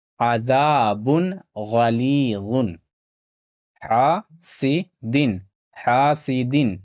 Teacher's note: حلقی میں سے ہے، یہاں پہ بھی اظہار ہوگا، الف سے پہلے زبر ہے، الف مدہ ہوگا، یہاں پہ تھوڑا کھینچ کر پڑھنا ہے ، اور یہاں یا ساکن سے پہلے زیر ہے، یا مدہ · یا ساکن سے پہلے زیر ہے، یا مدہ ہوگا، اسے بھی تھوڑا کھینچ کر پڑھنا ہے